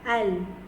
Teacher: lidah kita menekan pada gusi gigi depan sebelah atas berhampiran dengan makhraj huruf nun